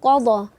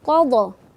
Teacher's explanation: Kita membacanya itu terangkat, lidah kita sempurna ke langit-langit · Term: isti'la